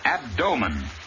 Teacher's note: the word abdomen accent on the second syllable